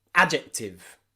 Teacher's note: the D followed by a J is often a single j, j, j sound.